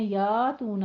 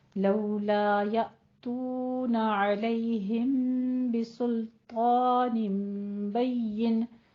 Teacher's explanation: یا تو میں آپ نے یا تو نہ نہیں کہنا، تھوڑا سا جھٹکا دینا ہے، حمزہ ساکن ہے. جب حمزہ ساکن ہوتا ہے ہمارے پاس تو ہم کیا کرتے ہیں، وہاں پہ تھوڑا سا ہلکی سے اس کو جھٹکا سا دے کے پڑھتے ہیں